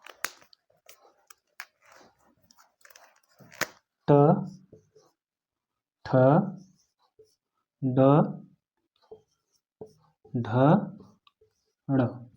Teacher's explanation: ट वर्ग, इसको मूर्धा से बोला जाता है।